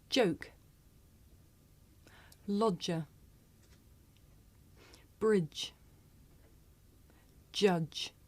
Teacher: this is a voiced consonant you can hear it at the beginning of the word joke in the middle of the word lodger